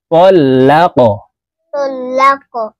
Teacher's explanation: এই কফ হরফকে উপরের দিকে ধাবিত করে ধাক্কা দিয়ে উচ্চারণ করতে হবে, কারণ এই কফ হরফ কলকলার হরফ।